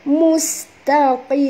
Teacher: tutup mulut tuan dan puan kerana mim ni makhrajnya ialah di bibir. Ya, kena tutup mulut.